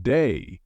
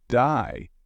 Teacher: Australian accent they may say words like day more like die